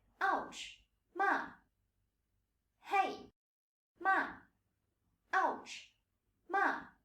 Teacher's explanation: for the 4th tone, you fall sharply.